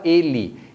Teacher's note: O primeiro E tem o som fechado, mas quando você fala normalmente, a gente fala ele. Então esse E final acaba sendo reduzido para o som do I